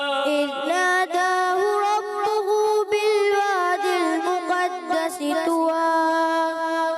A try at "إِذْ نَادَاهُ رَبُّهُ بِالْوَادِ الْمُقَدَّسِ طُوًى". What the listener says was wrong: طوى میں طا موٹا رکھیں. مقدس سین کی ادائیگی تھوڑا سا اور سٹی بھی اس کو ٹھیک ہے محنت کیجئے گا.